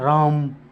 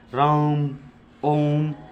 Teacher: थोड़ा सा जो खींच के बोल देते हैं राम ओम, ये प्लुस स्वर भी कहते हैं, इन्हें हम विशाल स्वर भी कहते हैं।